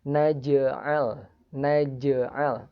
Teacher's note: di sini ada jim bersukun sehingga bacanya jimnya dipantulkan ringan